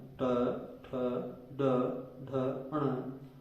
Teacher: ट वर्ग पूरा मूर्धा के द्वारा बोला जाता है। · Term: मूर्धन्य वर्ण